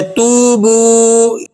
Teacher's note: تا کی ادائیگی نرم، سیدھی اور بغیر دباؤ کے ہو رہی ہے